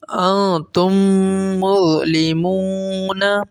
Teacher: اب یہاں دیکھیں میم ساکن کے بعد دوسری جو ہے وہ میم ہے، انتم کا آخری میم ہے اور مظلمون کا پہلا میم ہے۔ اب میم ساکن کے بعد میم آ رہا ہے تو کیا کریں گے، ہم غنہ کریں گے۔